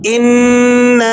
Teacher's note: ये नून मुशद्दद है और आगे हुरूफ़ मद्दा भी है। यहाँ आप गुन्ना भी अदा करेंगे और इसके साथ साथ मद की भी अदायगी होगी।